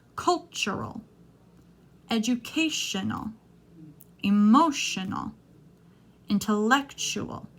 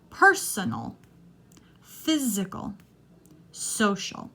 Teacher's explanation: notice how the stress is never on the all part of the word this is an unstressed sound